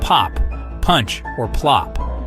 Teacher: we release that pressure all at once it's like a tiny explosion in our mouths this process is why p is such a strong clear sound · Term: P sound